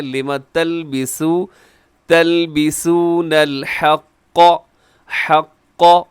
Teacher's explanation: لما تلبسون الحق حق اس میں قاف موٹا رکھیے گا